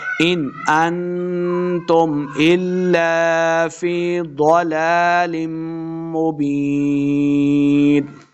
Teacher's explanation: ضلال مبین آخر پہ یا مدہ ہے، اس کو 2 حرکات لمبا کریں گے